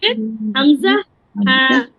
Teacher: 1 number মাখরাজ হলকের শুরু হইতে